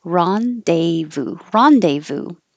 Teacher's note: it's a word from French so it definitely doesn't sound the way that it looks we don't say this Z or the S